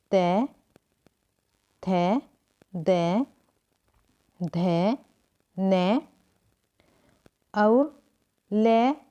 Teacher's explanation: ते थे दे धे ने और ले और शे का उच्चारण स्थान दंत होता है और इन वर्णों को दंत्य कहा जाता है।